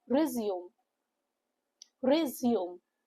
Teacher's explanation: the two syllable word with a stress on the second syllable